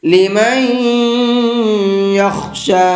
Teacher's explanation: نون کے اندر غنہ کر کے پڑھیں گے، اس لیے کہ نون ساکن کے بعد میں یا ہے اور نون ساکن کے بعد میں یا آتا ہے تو وہاں غنہ کر کے پڑھتے ہیں۔